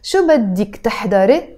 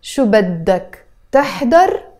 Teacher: And تحضري becomes تحضر. You drop the إيه sound in the end.